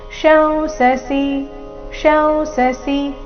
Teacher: ಇಲ್ಲಿ ಶ ಇದೆ ಮೊದಲು, ಶ ನಂತರ ಅನುಸ್ವಾರ ಇದೆ. ಅದರ ಉಚ್ಚಾರಣೆ ಅನುನಾಸಿಕ ಮ ರೀತಿ, ಅದರ ನಂತರ ಸಸಿ.